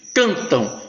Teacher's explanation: Cantam, esse M com som de U.